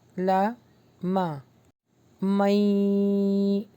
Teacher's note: نون escape ہو جائے گا اور میم جو ہے یا سے ملے گا